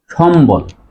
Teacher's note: ম এর সাথে যদি ব ফালা যুক্ত থাকে তাহলে ব এর উচ্চারণ বজায় থাকে